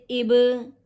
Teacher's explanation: ساکن حرف کو ایک بار اپنے سے پہلے والے حرف سے ملا کر پڑھتے ہیں۔ یہاں پر حروف با جو ہے حرف قلقلہ میں سے ہے، ساکن حالت میں ہے، کلمے کے درمیان ہے، لہذا قلقلہ ہوگا، قلقلہ صغریٰ